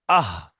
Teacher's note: তো গোলার শুরু থেকে উচ্চারণ হয়, হালাক বা কণ্ঠনালীর শুরু থেকে উচ্চারণ হয় হামজা হা।